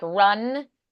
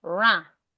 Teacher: they also don't really pronounce the N they just turn the vowel nasal